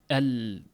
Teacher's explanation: Havo tinni ikki yonidan chiqib ketadi. Al deganda ushlab turadigan bo'lsangiz til yopishib turadi. Havo yon tomondan chiqib ketishga majbur boʻladi. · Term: inxirofi